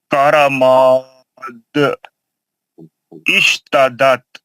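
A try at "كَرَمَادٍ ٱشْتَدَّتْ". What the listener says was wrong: اشتدت دا سختی سے پڑھیے نا تجدید کو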